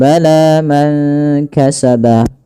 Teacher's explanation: panjangkan huruf la-nya sepanjang 2 harakat karena la di sini ada alif kecil yang datang setelahnya dan ia berada di atas huruf ya. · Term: mad tabi'i